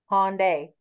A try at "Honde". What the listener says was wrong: That's a harder sound at the end of that word. Honde.